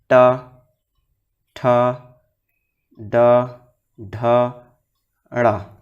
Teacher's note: तो ट, ठ, ड, ढ, ड़ करेंगे तो जीभ क्या है उलट कर छूता है, तो ये होता है मूर्धा।